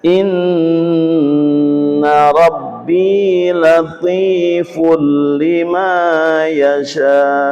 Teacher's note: dumatan bertemu dengan lam dibaca suara tanwin diganti lam, dibaca cepat dan jelas.